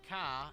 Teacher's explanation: In Boston, car becomes ca and bar becomes bow.